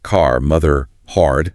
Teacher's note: the r is back at the end of words and in the middle of words so words like car mother hard all have that very distinct R sound